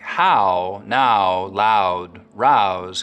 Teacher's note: In words like how, now, loud, rouse Canadians still use that wide ow diphthong.